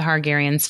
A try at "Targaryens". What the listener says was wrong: are you saying hargan or targaryan T targaryens